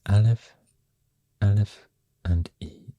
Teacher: Aleph, the consonant, the glottal stop, and followed by E sound